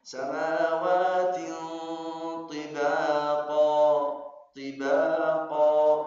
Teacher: Ini ada ikhfa. Ikhfa hanya ada dua harakat gunnah ikhfa karena tanwin bertemu ta.